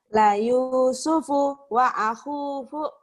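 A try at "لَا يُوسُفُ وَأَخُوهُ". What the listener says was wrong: Tapi punya jangan putus. Bagus kayak gitu. Nih ya, nyambung.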